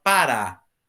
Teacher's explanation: E parar, também acentuada, porque o som forte está no A. Ah, mas... Ô, oh, para.